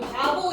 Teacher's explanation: 뒤에 있는 비읍은 모음 사이에 있지? 울림 소리 사이에 있기 때문에 얘는 울리는 소리여서 유성음이라고 듣고 이거는 들 유성음보다는 덜 흘리는 무성음이라고 인식을 해.